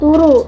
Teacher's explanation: ada proses penyederhanaan karena bunyi D di tengah hilang dan vokalnya diseragamkan jadi U